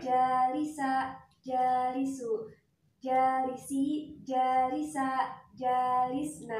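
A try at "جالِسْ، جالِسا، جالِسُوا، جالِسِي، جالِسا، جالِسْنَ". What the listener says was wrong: Ya, kurang panjang ya. Jalis, jalisa, antuma kurang panjang. Jalisu, ulangi lagi.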